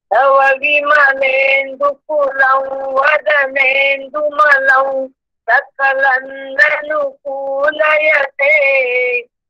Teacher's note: पुढे वदनेन्दुमलं म्हणून आपल्याला व म्हणायचंय अनुस्वाराचा उच्चार. सगळ्या अनुस्वारांचे उच्चार करू नका. दुकुलम कुमलम सकलम असं नाहीये.